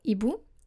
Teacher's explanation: You don't say un hibou because our H is a consonant. And with a consonant, you don't make liaison. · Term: aspirated H